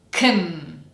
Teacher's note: We cut the vowel sound and go directly from k to n.